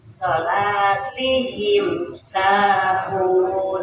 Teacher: Jadi apa namanya, dibacanya jelas, kemudian di apa humnya itu disempurnakan dulu baru dibacakan ya. Jadi mimnya itu bibirnya itu tidak rapat ya Pak ya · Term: idhar syafawi